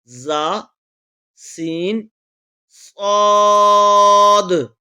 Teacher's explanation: ان تین حروف زا، سین، صاد کو ادا کرتے وقت سیٹی کی طرح تیز آواز نکلتی ہے، اس لیے ان حروف کو حروف صفیریہ یعنی سیٹی والے حروف کہتے ہیں.